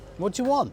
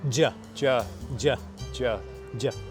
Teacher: We can reduce do you questions to dia, ju, or even ja, Ja. ja, Ja.